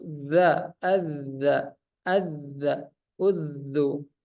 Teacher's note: huruf dza ini sifatnya jahar nafas ditahan kemudian rakhawah suara dilepas dza Aza Aza udzu kemudian istifal ya lidahnya rileks biasa saja